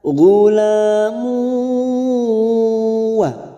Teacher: ada duma tanwin pada huruf mim, dumatain yang bertemu waw, namanya bacaan idgham bi gunnah.